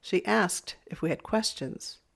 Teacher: Here, asked is the loud word